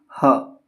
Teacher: तो जिन वर्णों के उच्चारण में मुख खुला रहता है यानी कि मुंह जो है वो खुला रहता है तथा वायु कंठ को खोलकर झटके से बाहर आती है। वायु जो है कंठ को खोलकर झटके से बाहर आएगी। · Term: काकल्य वर्ण